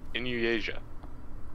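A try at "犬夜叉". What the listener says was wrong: Never heard Inuasha be pronounced as Inuasia.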